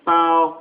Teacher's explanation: That is what is known as the first accent, which makes it a sing-song kind of voice, like a oh.